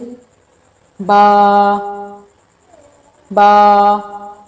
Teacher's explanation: با ہونٹوں کے تری والے حصے کے آپس میں ملنے سے با ادا ہوتا ہے۔